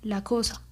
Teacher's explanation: la pérdida total de la s en posición final absoluta